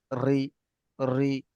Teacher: মুখটা সাধারণ অবস্থায় রয়েছে মুখ গোল করছি না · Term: বারিক